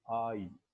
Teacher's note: only in about the last quarter of the diphthong does the glide to E become noticeable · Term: diphthong I